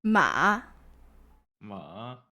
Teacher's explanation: First falling and then going up again.